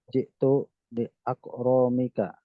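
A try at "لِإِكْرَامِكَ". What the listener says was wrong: Li iqra, bukan li ah. Li ikramika.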